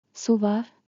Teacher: Noun plus. Var. With a rising tone turns into a question. Su var. Equals, is there water?